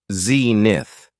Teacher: It has 2 syllables, and the stress is on the first syllable